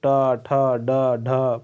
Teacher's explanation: तो ट ठ कहां से उच्चारण हुआ मुर्धा से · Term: मुर्धन्य